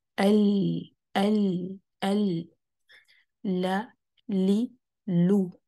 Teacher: جب ہم لام کو سکون سے پڑھتے ہیں نا تو اس کو لائٹ رکھنا ہے. اگر اس سے پہلے یا اس کے بعد والے آنے والا حرف کوئی ہیوی لیٹرز میں سے ہے تو آپ نے لام کو ہیوی نہیں کر لینا.